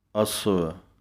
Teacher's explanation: ਕਨਕ ਪਾਠ ਨੰਨੇ ਸਿਹਾਰੀ ਦਾ ਧਿਆਨ ਰੱਖਣਾ ਹੈ। ਕਨਕ ਕਈ ਪੂਰਾ ਵਾਵਾ ਪੜ੍ਹਦੇ ਹਨ ਅਸਵ, ਲੇਕਿਨ ਅੱਧੇ ਵਾਵੇ ਦੀ ਆਵਾਜ਼ ਹੈ